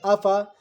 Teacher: فا نہیں کھچے گا، الف نہیں کھچے گا